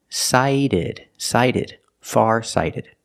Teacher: The T is pronounced like a fast D because phonetically it's between vowels.